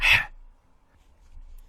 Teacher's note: we are used to the h like hat, but we have to make it more guttural